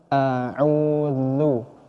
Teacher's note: huruf dzal ini adalah huruf tipis huruf dzal ini memiliki sifat yang namanya mengalirnya suara